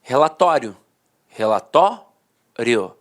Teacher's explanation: a pronúncia paroxítona terminada em ditongo falava assim ó relatório relatório a penúltima sílaba a sílaba mais forte · A penúltima sílaba era a sílaba mais forte e a última, de fato, perdia a força.